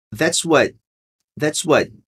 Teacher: esse what aqui você não vai pronunciar o T. É um stop T. A gente vai dizer, that's what.